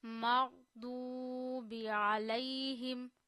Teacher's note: अब वाउ गोल होती है, वाउ पे खुद तो जज्म है लेकिन वाउ से पहले वाले वर्ड पे पेश है, تو واو مدہ ہوتا ہے، واو مدہ کو بھی 1 فنگر جتنا کھینچتے ہیں، یعنی ایک انگلی کھولنے میں جتنا ٹائم لگتا ہے اتنا واو کو کھینچ کے پڑھیے.